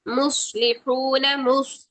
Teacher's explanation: सौद मोटा रखेंगे, हा की आवाज ठंडी सांस से निकालेंगे। मुस्लिहून, लाम की जेर को ले नहीं बनाना है, मजहूल नहीं करना, ली ली, मुस्लिहून, मुस्लिहून।